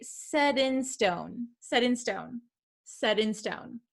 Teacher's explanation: sometimes it is something called a flap t it sounds like a soft d sound